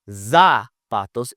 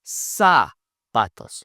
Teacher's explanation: Now, with the Z, it is not a Z sound. It is a sound just like a snake.